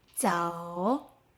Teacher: O starts at o, glides toward u. O. The o is the main sound.